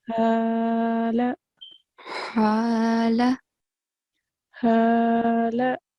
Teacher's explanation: ha, it comes from the middle of the throat.